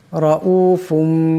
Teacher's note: এখানে র উপর জবর আছে রাকে মোটা আওয়াজে পড়তে হবে